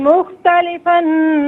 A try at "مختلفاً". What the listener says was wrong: مختلفاً یہاں غنہ نہیں ہوگا۔